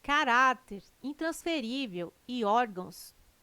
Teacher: Caráter, intransferível e órgãos têm sua sílaba tônica na penúltima sílaba. São paroxítonas.